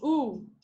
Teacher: your tongue is towards the back and it's high